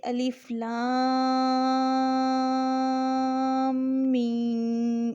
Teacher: مد کو 6 حرکات کے بقدر کھینچنا ہوتا ہے، اور اس کا آسان حل یہی بتایا جاتا ہے کہ آپ اپنی مٹھی بند کریں اور اس کو پڑھنا شروع کریں، اور اپنی ایک ایک کر کے انگلی کھولتے جائیں، جیسے الف لام میم، اس طریقے سے۔